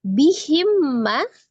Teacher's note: mim sukun ketemu dengan huruf mim, idgham mimi ya. Diidghamkan sertai dengan gunnah